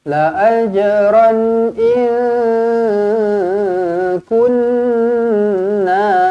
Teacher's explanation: nun kosong bertemu kaf, dengungkan 2 harakat